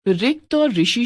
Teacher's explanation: हिंदी में रिक्त और ऋषि शब्दों की पहली ध्वनि के उच्चारण समान हो गए हैं।